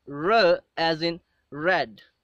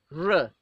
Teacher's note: second liquid sound that we have is run okay the tip the tongue is raised to the palate and then it curls back slightly when we produce this sound and there is again no vibration as there is a vibration